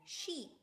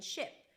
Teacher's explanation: the tense e as in sheep in the relaxed e as in ship